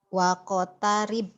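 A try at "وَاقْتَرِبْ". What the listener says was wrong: Jangan wako. Wak tarib. Jangan wako tarib. Wako mah jangan. Berarti ada barisnya. Wak tarib.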